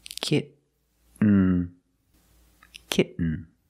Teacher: get you don't release and then you fall to an end when you make the stop T the tongue is up almost in the end position so you don't have to change much